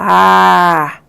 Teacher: a vogal A, ela é não arredondada, quanto a altura dela, ela é baixa, porque ela está aqui embaixo, ó.